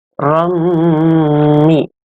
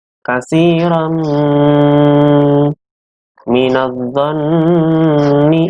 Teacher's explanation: ada tanwin bertemu dengan huruf mim, yaitu huruf idgham bi gunnah. Masuknya dengan dengung.